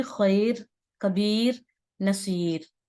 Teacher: کبیر, نصیر, ٹھیک ہے, اس طرح اس کو باریک کیا جائے گا, کیونکہ نارملی آپ کو یہ سمجھانے کا مقصد یہ ہے کہ یہاں ہوتا کیا ہے کہ یہاں پر کبیرن ہوتا ہے, نصیرن ہوتا ہے, نارملی خیرن ہوتا ہے, لیکن جب ہم یہاں پر رک رہے ہیں تو یہاں پر رکنے کی صورت میں خیر, کبیر, نصیر, ٹھیک ہے, ان کو باریک پڑھا جائے گا